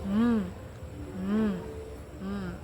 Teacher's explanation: Dia termasuk dalam bunyi voice karena saya merasakan adanya getaran suara di tenggorokan saya dan bilal karena bibir atas dan bibir bawah saling bertemu dan termasuk dalam nasal.